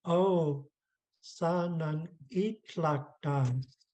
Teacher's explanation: So it makes it very sing-songy. Our pitches rising, falling, and rising again.